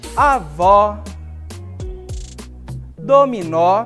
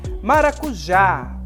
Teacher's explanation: todas essas palavras, a sílaba tônica está no final. Por isso, elas são acentuadas, certo?